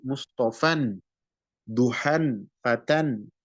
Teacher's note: secara pengucapan enggak ada lagi tuh alifnya ya. Secara, tapi secara tulisan masih ada.